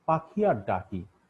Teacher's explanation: পাখির খ আর ডাকির ক বাগযন্ত্রের একই উচ্চারণ স্থান হতে উচ্চারিত হচ্ছে